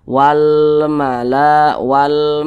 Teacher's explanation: di samping huruf mim termasuk salah satu huruf huruf qamariah maka alif lam berjumpa dengan huruf mim hukumnya adalah Alif Lam qamariah lagi maka huruf lamnya dibaca jelas